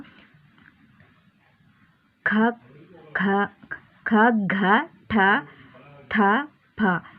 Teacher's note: ಇವು ಅಲ್ಪಪ್ರಾಣ ಖ ಖ ಖ ಘ ಠ ಥ ಪ ಇವು ಮಹಾಪ್ರಾಣ ಇವುಗಳನ್ನು ಹೆಚ್ಚು ಉಸಿರಿನಿಂದ ಉಚ್ಚಾರ ಮಾಡಬೇಕಾಗುತ್ತೆ ಹಾಗಾಗಿ ಇವುಗಳನ್ನು ಮಹಾಪ್ರಾಣ ಅಂತೀವಿ